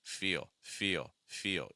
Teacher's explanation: keep it light, low in pitch, weak, fast. That L is not strong.